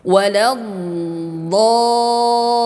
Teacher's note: panjangkan karena mad lazim mutsaqol ya sampai kepada enam harokat